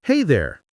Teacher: When someone says, Hey there, the tone usually goes up slightly.